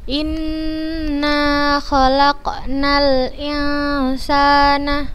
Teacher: Ini harokat kasroh bertemu dengan nun bertasydid maka kita bacanya dengan gunnah yang dipanjangkan.